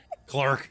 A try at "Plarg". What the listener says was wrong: No, yeah, Plarg with a P. like a plug, but with an R.